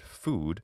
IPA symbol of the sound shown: u